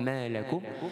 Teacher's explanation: Bergetar pada rongga hidung, khaysyum. Rongga hidung kita tu ada tempoh getarannya dua tempoh harakat. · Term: idgham gunnah